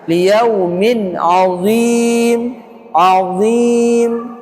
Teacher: min tanwin kasratain ketemu ain izhar halqi dibaca jelas · Ya, dha itu isti'la dan itbaq tebal.